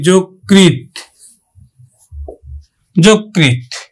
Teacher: আমরা অন্তস্থ জ উচ্চারণ করি না, বর্গীয় জ উচ্চারণ করি